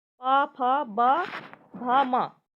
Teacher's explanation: पा वर्ग का उच्चारण स्थान उष्ट है · ओष्ठ ध्वनि से, ओष्ठ से, क्योंकि ये पा वर्ग के अंदर आती है और पा वर्ग का उच्चारण स्थान ओष्ठ है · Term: उष्ट ध्वनि